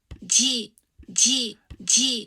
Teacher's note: it's got this affricate at the beginning which starts with a voiced stop